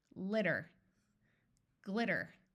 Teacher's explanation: Americans tend to substitute a D sound for the T sound